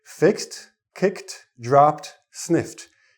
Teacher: S, K, P, F ending sounds go with the T ending for the ED. Most of the other sounds come into the D sound. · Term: T sound